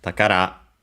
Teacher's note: takara treasure accented on the last syllable on its own